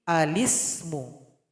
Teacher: Sehingganya lam sukun hilang mesti diganti menjadi lam yang kasrah. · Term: naqal